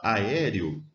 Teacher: é uma palavra paroxítona sílaba tônica é a penúltima com um ditongo na última sílaba